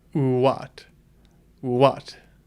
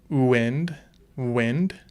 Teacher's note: you're pursing your lips and if you listen closely you're actually just making a u sound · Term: w sound